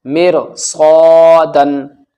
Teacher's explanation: سواد جہاں بھی آئے گا ہمیشہ موٹا پڑھا جائے گا، اور اس کے پڑھنے میں سیٹی جیسی آواز ہوتی ہے، سخت آواز ہوتی ہے۔ سواد کے ساتھ جہاں بھی الف آتا ہے الف بھی موٹا پڑھا جاتا ہے اور سواد بھی۔